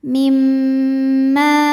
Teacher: cara bacanya dengung bunyi M tahan sampai ada suara masuk hidung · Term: gunah musyaddadah, gunnah musyaddadah